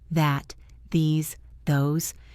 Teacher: For the voiced one, like this, that, these, those, your vocal cords vibrate. It buzzes. Z's.